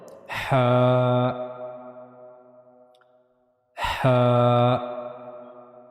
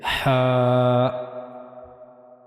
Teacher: we have to read it from the middle part of the throat.